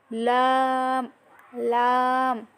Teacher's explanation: লামের মাখরাজটা হলো জিহ্বার আগার কিনারার উপরের দাঁতের গোড়ার সাথে লাগিয়ে